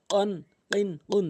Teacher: ধাক্কা দিয়ে জিব্বার গোড়া উপরে তালের সঙ্গে।